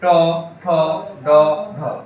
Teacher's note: তোমার দাঁতের উপরে যে মাড়িটা রয়েছে না, সে মাড়িতে লাগতেছে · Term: মূর্ধন্য